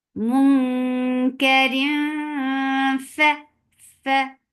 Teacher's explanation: Ikhfa is when you are not pronouncing the sound of noon, but you are hiding it and you're going towards the makhraj of the next coming up letter, and here it is fa, and you're keeping the sound in your nose.